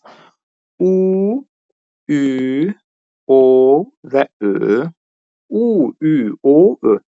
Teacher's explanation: Bunları tələffüz eləyəndə dodağımız qabağa tərəf gəlir. Yəni dodaqlar uzanır. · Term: dodaqlanan saitlərimiz